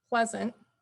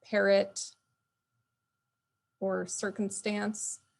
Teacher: if you say pleasant and you think about that second A, it's not actually saying ah right there. And it's not saying a either. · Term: schwa